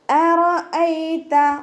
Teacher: യാ ലീനക്ഷരമായിട്ടാണ് വന്നിട്ടുള്ളത്. യാക്ക് സുക്കൂനും മുന്നേയുള്ള അക്ഷരത്തിന് ഫതഹ. സോഫ്റ്റ് ആക്കിയിട്ട് ഉച്ചരിക്കുക.